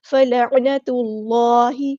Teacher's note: فلعن، نون پہ زبر ہے اور تا کو ہم نے لام کے ساتھ ملا دینا ہے، حمزۃ الوصل ہمارا ڈراپ ہو جائے گا. اللہ کا جو لام ہے یہاں پہ پور یعنی ہیوی یعنی موٹا ادا ہوگا